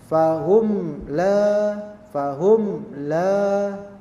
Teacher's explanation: mim mati di sini ketemu dengan lam dan dia jelas bacanya fahum la fahum la maka dia menjadi izhar ya fahum La